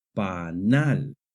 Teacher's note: The word panal has the stress on the last syllable. Panal. This follows the natural stress rules in Spanish which say that if a word ends in a consonant other than n or s, the stress naturally falls on the last syllable.